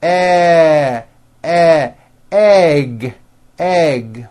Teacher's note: It's made with the front of the tongue low. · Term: eh sound